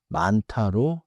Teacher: 많다는 니은히읗 겹받침 뒤의 디귿이 히읗의 영향으로 티읕처럼 나서 만타로 발음돼요.